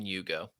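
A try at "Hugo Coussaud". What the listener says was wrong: Ugo. Ugo. Hugo. There's no H there. Ugo.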